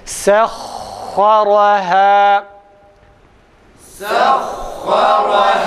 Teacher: fakat ha'da ses kesilmiyor, ses akıyor.